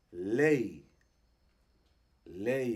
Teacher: aquí tenemos una e que podríamos decir que tiene una I también entonces e e y es larga